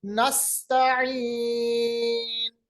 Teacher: ये सीन, जा और सौद जिनको हम हरूफ सफीरिया कहते हैं। सफीर यानी आवाज दांत के बीच में से तेज निकलती है · अक्साई हलक यानी जो हलक जो हमारा गला सीने की जानिब है वहां से अदा होता है हा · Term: सिफत सफीर, गोल हा